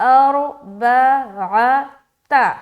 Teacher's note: را موٹا اور با تو بالکل آسانی کے ساتھ آپ نکال لیں گے. عین کو حلق سے نکالے اور تا کو باریک